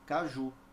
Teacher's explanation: receber ou não Por exemplo eu tenho aqui a palavra Caju Veja essa palavra tem uma sílaba que é pronunciada fortemente é a última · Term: sílaba tônica